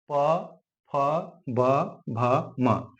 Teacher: जब इन वर्णों का उच्चारण करते हैं हम तो ये आवाज होठों से होकर के निकलती है ठीक एक होठ दूसरे होठ को छूते हैं इसलिए इसे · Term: होस्ट व्यंजन